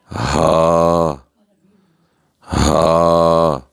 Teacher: ہا یہ انتہائی حلق سے ادا ہوگا